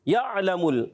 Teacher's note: عین کی ادائیگی حلق کے درمیان والے حصے سے ادا ہوتا ہے